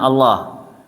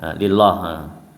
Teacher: Kalau pada lafadz Allah itu berat, kalau lillah itu ringan ya.